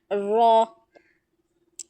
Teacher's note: जुबान की नोक जब ऊपर वाले दांतों के मसूड़ों को लगे तो र की अदायगी होती है